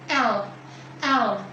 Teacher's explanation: letak lidah di belakang gigi dan ada udara yang mengalir melalui sisi samping lidah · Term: alveolar